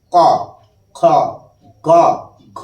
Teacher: ক খ গ ঘ এই যে পাঁচটা বর্ণ আমরা উচ্চারণ করছি উচ্চারণ করার সময় জিহভা জীব আমাদের কণ্ঠ রোধ করছে কণ্ঠ গলাকে স্পর্শ করছে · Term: কণ্ঠ বর্ণ